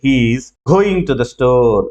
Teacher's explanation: ఇప్పుడు stressed content words ఏవైతే ఉన్నాయంటే ఇక్కడ గోయింగ్ ఒకటి ఉంది, స్టోర్ ఉంది.